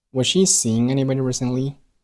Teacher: 字母 T 发的爆破音 T 并没有爆出来，并且这个句子语调上扬